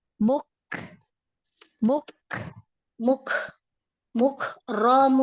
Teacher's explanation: Hames pada huruf Kaf huruf Kaf yang pertama syiddah syiddah Ya jadi suara tertahan dulu di makhraj huruf Kaf baru makhrajnya direnggangkan ya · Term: Kaf sukun